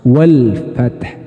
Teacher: Ini wajib dibaca jelas lam sukunnya. Tidak boleh dibaca wafat, harus dibaca lam sukun. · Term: idhar qamariyah